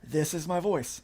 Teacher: So my vocal cords got damaged while on the intubator, and this is what I'm working with now. This real smoky, like breathy voice.